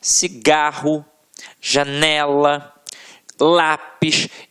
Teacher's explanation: em que a sílaba tônica está na penúltima sílaba